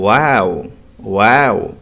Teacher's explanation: यह वाव जो होता है इसको दोनों होठ गोल करके अदा करते हैं। जैसे वाओ जैसे कोई चीज हम देखते हैं तो हमारी जुबान से बहुत अच्छी लगती है तो हमारी जुबान से फौरन निकलता है वाओ वाओ ऐसे अदा करते हैं।